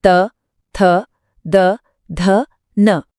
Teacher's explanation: दंत्य यानी दांत। इनको बोलते समय जीभ की नोक सीधा ऊपर वाले दांतों को छूती है। पूरा त वर्ग इसमें आता है। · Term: दंत्य वर्ण